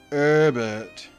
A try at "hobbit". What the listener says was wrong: No, you pronounce the H.